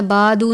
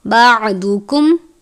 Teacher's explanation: ضاد کو ہمیشہ پر پڑھتے ہیں، دال کی طرح نہیں پڑھنا، بادو نہیں پڑھنا بلکہ بعدکم۔